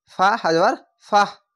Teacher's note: থামতে গেলে গোলতায়ের ওপরে সাকিন দিয়ে হা হয়ে যাবে, এরকমভাবে ফা হাজার ফাহ এভাবে হয়ে যাবে।